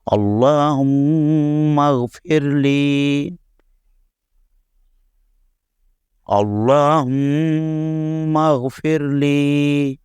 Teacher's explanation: اس میں لفظ اللہم کا لام ہم نے پر پڑھا ہے اور لام کے اوپر کھڑا زبر ہے، اس لیے اس کو 1 الف کی مقدار کھینچا جائے گا۔